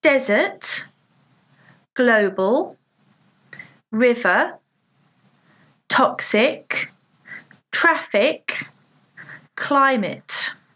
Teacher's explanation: 2 syllables with the stress on the first one: desert, global, river, toxic, traffic, climate.